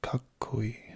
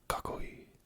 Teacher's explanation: So that little pause after I say ka, that's a small tsu. So I say kakkoi as opposed to kakoi. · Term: double consonant